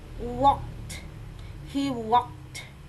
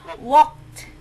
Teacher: Nah ini dibacanya kalau PHKFTS. Nah ini kan K ya, namanya voiceless, ini tanpa suara. Dibacanya T